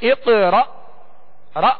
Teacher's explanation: جب حمزہ ساکن پڑھا جائے تو اس میں جھٹکا واضح ہوگا، جیسے اقرا را، یہ حمزہ ساکنہ میں جھٹکا واضح دیں گے۔